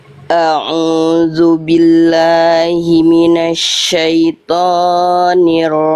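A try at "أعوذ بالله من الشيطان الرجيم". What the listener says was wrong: Tonya jangan kepanjangan Bunda. Tonya 2 harokat aja. A'udzu billahi minasyaitonir rajim. Jangan kepanjangan tonya.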